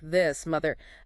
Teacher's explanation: And for the sound in words like this, mother, that one does have the buzz. That's the voice TH, the E-gree.